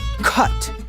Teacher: a c is a voiceless back stop when followed by a u like in the word cut that voiceless back stop of the C remains pretty easy to